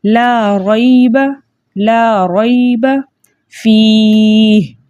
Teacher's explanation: را کے اوپر زبر ہے، اس لیے اس را کو موٹا پڑھیں گے